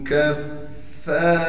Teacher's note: فا مشدد کے بعد الف ہے لہٰذا فا کو ایک الف کے مقدار کھینچیں گے ، را کو موٹا کر کے بھی پڑھیں گے اور را